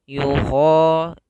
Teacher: usahakan suaranya kita keluarkan dari tenggorokan yang atas dekat dengan pangkal lidah kita, karena makhraj huruf kha kita keluarkan daripada tenggorokan atas kita, ya.